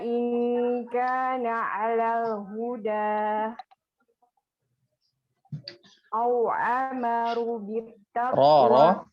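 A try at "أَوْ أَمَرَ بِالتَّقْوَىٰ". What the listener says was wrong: Au amara bit bukan ru. Au amara bit taqwa. Ro-nya jangan panjang. Ro-nya jangan panjang. Au amara bit taqwa. Tak-nya bertasdid. Bit taqwa. Bit taqwa. Au amara bit taqwa. Tadi taknya jangan panjang.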